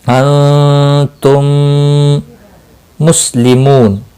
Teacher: واو مدہ ہے، ایک الف کے برابر کھینچ کر پڑھیں گے، اور وقف کی صورت میں نون ساکن پڑھا جائے گا، وقف بالاسکان ہوگا، مد العارض وقفی ہوگا، 3 سے 5 سیکنڈ لمبا کر کے وقف کریں گے۔